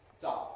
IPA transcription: dʌo